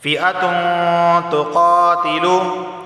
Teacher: تنوین کے بعد تا آیا ہے، تا حروف اخفا میں سے اخفا والا غنہ ہوگا